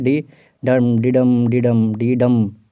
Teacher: last वाला पे ज़्यादा जोर आना चाहिए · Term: आयम्बिक पेंटामीटर